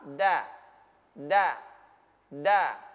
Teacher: huruf da itu ujung lidah menempel pada gigi seri atas da da da bukan Da kalau da dia berarti di tengah